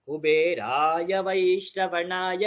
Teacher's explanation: थोड़ा इंटोनेशन में आप सब लोग ध्यान दीजिए कहाँ पर आपका अगर करेक्शन आता है, क्योंकि किसी किसी का कुबेराय वो एक वेरिएशन आता है, कुबेराय वैश्रवणाय, रा को नीचे नहीं करना है, सिर्फ कुबे का नीचे आता है